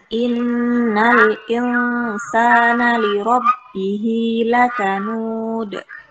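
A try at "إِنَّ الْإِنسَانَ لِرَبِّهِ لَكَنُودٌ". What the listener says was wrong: Nah, lamnya di apa? Dialirkan suaranya, jangan sampai terjeda. Innal i. Ya, innal insana li rabbihi lakanud.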